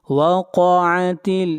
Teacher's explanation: قاف کو موٹا پڑھیں گے، قاف حروف مستعلیہ میں سے ہے اور تا کو ملائیں گے لام کے ساتھ۔